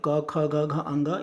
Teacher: क ख ग घ अंग, ये जो है कंठ से उच्चारित होता है, कंठ व्यंजन है